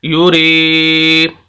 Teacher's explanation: ऐसी या साकिन जिसके पिछले लफ्ज़ के नीचे ज़ेर हो, ऐसी या साकिन जिसके पिछले लफ्ज़ के नीचे ज़ेर हो वो या मद्दा कहलाती है, और ऐसे लफ्ज़ को हम लंबा करेंगे, यानी रा को हम लंबा करके पढ़ेंगे